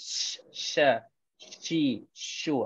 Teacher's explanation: Bila sebelum nak sebut sya tu dia ada macam tersembur sikit. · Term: sifat tafashi